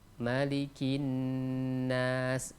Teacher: Mim di sana tidak boleh dipanjangkan. Berbeda dengan mim atau kata malik yang berada di surah Al-Fatihah, itu boleh dipanjangkan.